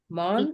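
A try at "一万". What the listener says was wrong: Ichiman. There you can't say man. You have to say Ichiman. Ichiman.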